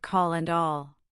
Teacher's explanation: For this version, your tongue tip still touches the same spot, but the body or back of your tongue lowers slightly within your mouth, creating a deeper, more resonant quality to the sound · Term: dark L